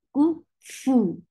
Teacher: For any dhamma, you are circling your lips very well. The sound is short.